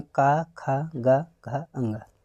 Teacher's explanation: जो का वर्ग का व्यंजन है इसका उच्चारण कंठ से होता है